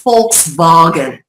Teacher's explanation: the V is said with an F sound, and then Wagen, the W is said with a V phonetic sound